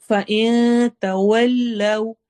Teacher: فَإِن میں نون کی آواز کو چھپائیں گے